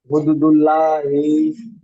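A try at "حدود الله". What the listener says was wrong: হুম, বানান করে বলেন, হুদু ওয়াও মাদ্দা টান হবে, হুদুদুল্লাহি, সুন্দর করে বলতে হবে, বানান করে বলেন। লা হবে না ল হবে? লা হবে না ল হবে? লা কেন হবে? আল্লাহ শব্দে লাম তাজদিদের পূর্বে দেখেন পেশ এসেছে, তাহলে এখানে পুর হবে, ল হবে। হুদুদুল্লাহি,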